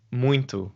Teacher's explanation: With the word muito, there's no N in there, but there sounds like there is when you say it.